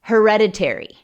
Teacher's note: La sílaba tónica es la segunda